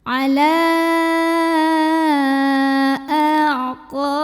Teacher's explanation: La mad jaiz munfasil karena ada mad dhabi'i ketemu hamzah dalam 2 kata yang berbeda, di mana mad dhabi'inya fathah panjang atau fathah berdiri pada kata ala, sedangkan hamzahnya adalah a pada kata aqabikum. Maka lamnya ini dipanjangkan boleh 4 boleh 5 harokat